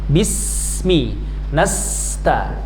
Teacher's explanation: sin sukun mengalir suara desis, as namanya as-sofir, as disertai dengan hamas nafas.